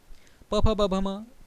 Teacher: इस पूरे प वर्ग का उच्चारण करने के लिए हमारे दोनों ओष्ठों का आपस में मिलना बहुत ज़रूरी होता है, इसलिए इन वर्णों को ओष्ठ्य वर्ण कहा जाता है।